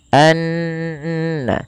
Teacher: Kemudian pelafal annallaha ada bacaan ghunah yang di mana ghunahnya adalah dimasukkan ke rongga hidung kita suaranya anna ya dan dia ditahan sepanjang dua harakat. Hati-hati jangan menebalkan huruf na karena na sifat pada dasarnya sifatnya tipis. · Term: gunnah